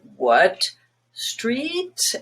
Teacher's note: start really low with your question word. What street? And you're gliding up. And you're ending up here.